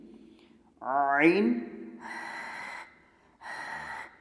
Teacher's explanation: آج کے لیسن میں ہم وسط حلق سے ادا ہونے والے دو حروف، یعنی حلق کے درمیانی حصے سے ادا ہونے والے دو حروف پڑھیں گے، عین ہا، عین ہا۔ یہ حلق کے اندر جیسے رگڑ کھا کے آواز نکلتی ہے، ایسے آواز نکلے گی